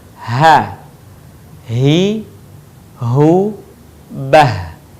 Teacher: Huruf H sekali lagi keluar dari tenggorokan terjauh.